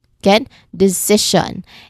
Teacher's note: There's three syllables, and the second syllable is where I stressed it.